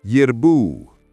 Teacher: The R should roll slightly if possible. Strong emphasis on bu.